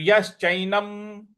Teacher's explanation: न के ऊपर जो अनुस्वार है उसका उच्चारण हमें म ले आना है